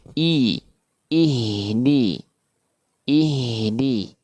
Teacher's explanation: hamzah pada kata i dijelaskan, disempurnakan dengan cara diturunkan rahang bawahnya